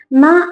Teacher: ന എന്ന് പറയുന്ന സമയത്ത് നാവിന്റെ തുമ്പ് മേലെയും താഴെയും ടച്ച് ആവുന്നുണ്ട്